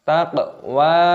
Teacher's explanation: qafnya berharokat sukun, diqalqalah dipantulkan suaranya